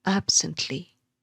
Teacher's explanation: It consists of one stressed syllable followed by two unstressed syllables. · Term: dactylic foot